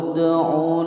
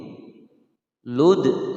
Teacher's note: Lud langsung dimasukkan ke huruf dal kemudian dipantulkan, karena huruf dal ini adalah huruf qalqalah. Qalqalahnya adalah qalqalah sughra karena berada di tengah-tengah kalimat.